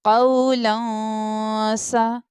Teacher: तनवीन के बाद सीन लेटर इख्फा लेटर आ रहा है, इसलिए हम यहाँ पर इख्फा करके पढ़ेंगे, गुन्ना करके पढ़ेंगे